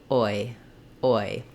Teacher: I'm not using ah and I per se. I'm just starting with a rounded open vowel and closing with an unrounded high front vowel. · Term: gliding diphthong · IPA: ɔɪ